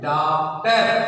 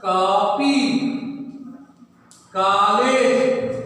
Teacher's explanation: यह आ तथा ओ के बीच की ध्वनि है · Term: आगत स्वर